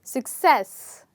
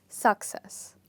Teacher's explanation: the second part of the word is stressed